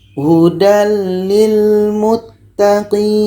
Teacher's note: tanwin bertemu lam ini idgham bila gunnah, tidak dengung.